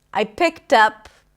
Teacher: the D is pronounced as a T.